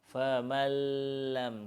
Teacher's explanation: kita masukkan huruf lam ke dalam huruf nun tanpa dengung. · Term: idgham